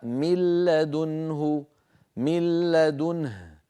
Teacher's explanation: النطق قبل الادغام من لا نون ساكنه بعدها بعدها بعدها لام بعد ان ادغم النون في اللام صار النطق بلام مشدده · ولا يبقى من النون شيء لا ذاتها ولا غنتها لا جزئها اللساني ولا جزئها الخيشومي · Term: بغير غنه, لام مشددة